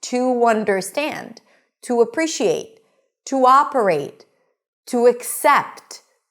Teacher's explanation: t', short and sweet, and you want to connect it, and you want to make it sound as if it's a part of the next word. If the next word starts with a vowel, it's going to be 'tu', and then you want to keep your voice going until the next word.